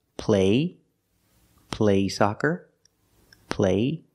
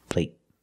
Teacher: But the stop T at the end makes the long A a little shorter.